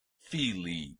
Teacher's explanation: I at the end of the genitive singular for this word is not a diphthong, but 2 syllables, separated by a Y sound, and it's pronounced filii.